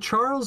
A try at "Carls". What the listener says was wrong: The H is silent.